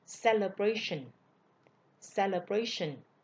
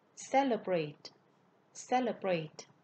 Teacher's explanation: ở danh từ thì celebration. Nhấn ngữ điệu nhấn ở vần 3. Nhưng mà động từ thì ngữ điệu sẽ nhấn ở vần 1. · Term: dấu nhấn